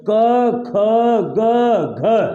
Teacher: जो एयर निकल रही है वो कंठ से निकल रही है